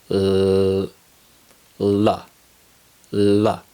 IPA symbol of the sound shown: l